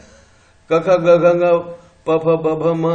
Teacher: प्लोजिव इसलिए है कि कंप्लीट क्लोज कर देते हैं हम साउंड को, एयर को, और उसके बाद में निकालते हैं, छोड़ते हैं एकदम से।